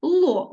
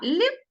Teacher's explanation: ло л приголосний твердий а ль приголосний м'який